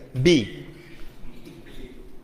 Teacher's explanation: It is a consonant and it's bilabial. I am joining my two lips, then uttering B. So B. So here it is voiced.